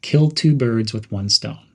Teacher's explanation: Emphasize two birds and one stone. Connect with one stone quickly. · Keep kill sharp but not harsh. Stress two and one clearly. Use a slightly upward intonation for the entire phrase, giving it a clever tone.